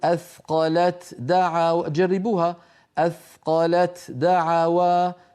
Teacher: فيها ثقل لأن اللسان ينتقل مرتين إلى المخرج نفسه. لكن لو حولنا التاء إلى دال وأدغمنا الدال في الدال فقلنا أثقل الدعوى فإنها تكون أسهل على الناطق وأخف على السامع.